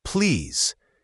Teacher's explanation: The word please should have a clear Z sound at the end, not an S.